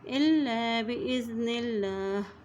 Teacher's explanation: अल्लाह के नाम से पहले ज़ेर आ गया इसलिए अल्लाह का नाम बारीक अदा करेंगे